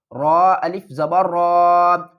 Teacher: را کے اوپر جب بھی زبر آئے گی تو را کو ہم موٹا پڑھیں گے۔